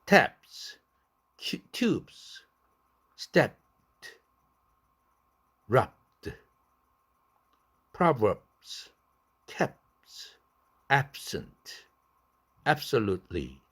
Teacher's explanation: 파열시켰다 또 C2 자음 어떤 자음인지 모르지만 다른 자음으로 넘어가는데 너무 입이 거추장스럽거든요. 그래서 앞에 있는 C1 첫 번째 자음을 파열시키지 않는다. unreleased 비개방음으로 발음한다.